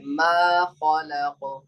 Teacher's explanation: ماں میں نہ کی آواز نہ جائے